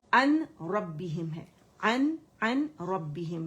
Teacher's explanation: یہ نون پورے کا پورا لام اور را کے اندر جو ہے یہ مرج ہو جائے گا, کمپلیٹ مرجنگ وداؤٹ غنہ ہو جائے گا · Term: ادغام تام بغیر غنہ